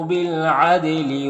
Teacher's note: دال میں قلقلہ ہوگا